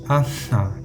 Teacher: tenemos simplemente aire que sale por la nariz